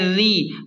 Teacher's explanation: مل قاف الف زبر قا، قاف کو موٹا پڑھیں اور ایک الف کے برابر کھینچیں۔ را زیر ری، را کو باریک پڑھیں کیونکہ را کے نیچے زیر ہے